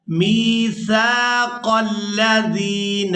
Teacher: وَإِذْ أَخَذَ اللَّهُ مِيثَاقَ الَّذِينَ، میم کو یائے مدہ کے ساتھ ملاتے ہوئے کھینچ کر ادا کریں گے، میثاق الذین، اور سا کو ادا کرتے ہوئے سیٹی کی مثل آواز پیدا نہیں ہونی چاہیے، سا کو ہمیشہ ہی نرمی کے ساتھ ادا کیا جاتا ہے۔